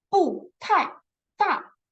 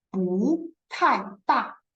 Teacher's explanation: And a pronunciation attention here will be, we know that this single character is 不, right? But if 不 with another character, which is also the fourth tone, the 不 will transfer to second tone. So here we will not say 不 太 大.